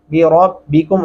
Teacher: را کو موٹا اور پر کر کے پڑھیں گے